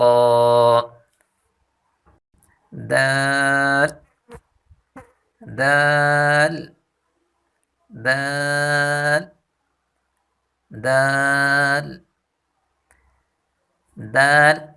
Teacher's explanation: تا کی مخرج، جو تا کی مخرج ہے وہی دال کی مخرج ہے، یعنی زبان کی نوک جب ثنایا علیا کی جڑ سے لگے، یعنی زبان کی نوک جب سامنے والے اوپر کے دو دانتوں کی جڑ سے لگے تو یہ حرف ادا ہوتے ہیں. ایک دفعہ پھر پڑھیں.